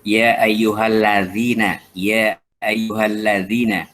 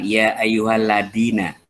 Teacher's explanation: Zal. Ya, jadi lidahnya digigit zal.